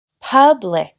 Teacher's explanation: pues la primera sílaba es la fuerte